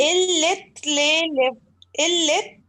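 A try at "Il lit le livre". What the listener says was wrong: अच्छा, improve the pronunciation. We do not pronounce of the last T of li. We say li only, ठीक है। Illi lolivre. Illi lolivre. But we write T.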